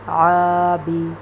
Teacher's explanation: عین الف زبر آ، با زیر بی، آ کو کھینچیں گے کیونکہ یہ الف مدہ ہے